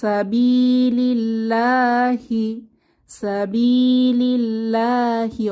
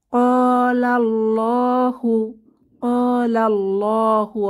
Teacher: তাহলে আমরা বুঝতে পারলাম যে আল্লাহ শব্দের আগের হরফে যদি ফাতহা বা দম্মা থাকে তাহলে আমরা মোটা করে পড়ব লাম এই ধ্বনিটিকে, এবং যখন আল্লাহ শব্দের আগের হরফে কাসরা বা জের থাকবে তখন ধ্বনিটিকে পাতলা করে পড়ব, লা আ ধ্বনিতে পড়ব।